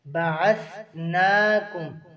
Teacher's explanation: بعثناکم نون کے اوپر کھڑی زبر ہے، ایک الف کے برابر کھینچیں گے۔